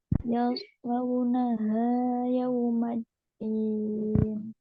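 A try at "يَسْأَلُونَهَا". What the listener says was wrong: Haknya nggak usah ha gitu ya. Yaslaunaha, yaslaunaha.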